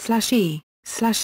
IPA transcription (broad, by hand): eː